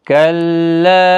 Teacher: کلا مد منفصل ہے، 3 الف کی مقدار کے برابر کھینچ کر پڑھیں